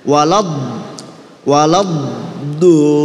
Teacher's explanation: Jadi sebelum keluar do itu kan kayak ada ditahan gitu ya. Walad do. Ini namanya istitolah.